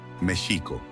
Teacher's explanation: Adicional a esto, en la lengua náhuatl, todas las palabras tienen un acento grave, un acento en la penúltima sílaba, por lo que la pronunciación debe ser Mexico, con el acento en la I y un sonido de SH para la X